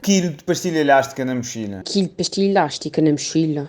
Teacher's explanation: a letra L, o som L, é substituído pelo som lhe quando vem depois de um I e antes de uma vogal. Quilo fica quilho, elástica fica ilhástica e mochila fica mexilha.